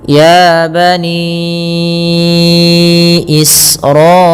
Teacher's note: Kedua-duanya di dalam riwayat Imam Syatibi atau Imam Hafz Anasim dari jalur Imam Syatibi panjangnya empat atau lima harakat. Maka ya kita panjangkanya empat harakat atau lima seperti ini. · alirkan nafas ketika melafalkan sin karena sin punya sifat hamz. · pada lafal bani Israila, ni, panjangkan ya sepanjang 4 harakat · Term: mad jaiz munfasil